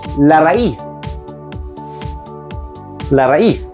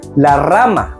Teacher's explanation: The hard R is pronounced with a strong trill